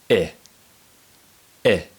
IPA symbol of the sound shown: ɪ